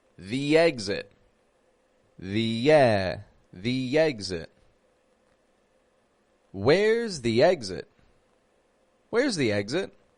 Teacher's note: the exit the exit but the giving it an e and why do we give it an e sound because exit starts with a vowel